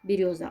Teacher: в слове берёза берёза ударный слог рё